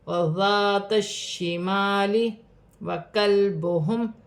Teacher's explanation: لام ساکن ہے، لام ساکن کو کاف کی حرکت کے ساتھ ملا کر پڑھا جائے گا